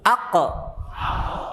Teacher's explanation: Ketika sukun ada pantulan, qalqalah.